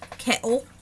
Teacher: this one also has a little bit of a glottal stop it's a glottal stop right there like in cattle there's no teeth there